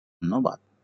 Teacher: যেহেতু নয়ে জ ফলা রয়েছে এই জন্য প্রথমটি ওকারান্ত হয়ে গেছে।